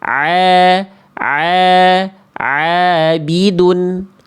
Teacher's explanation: Suara masuk ke dalam rongga hidung sehingga sengau.